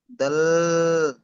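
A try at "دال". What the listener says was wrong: দাল হবে না জি, দাল। আপনি দাল বলে জিহ্বার আগাটি উপরে চেপে ধরছেন, ঠিক অমনটাই হবে না। দাল।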